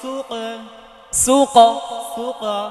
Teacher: সুক সুক, উপরের দিকে যাবে, কারণ এটা হচ্ছে কলকলা হরফের মধ্যে মোটা হরফ